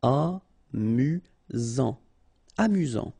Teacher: You've got only one S here between the vowels, so it's really this Z sound